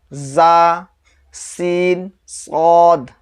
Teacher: نوک زبان اوپر نیچے کے دانتوں سے مل کر زا، سین، صاد ادا ہوتے ہیں۔ نوک زبان مثال کے طور پر یہ زبان ہے، اور یہ جو سامنے والا صرف اتنے جو حصہ ہے اسی کو نوک بولتے ہیں۔